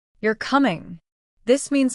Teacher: Rising tone. Your voice goes up at the end. · It can change the meaning completely. Falling tone. Your voice goes down at the end.